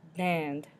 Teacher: You can hear that nasally N in the middle.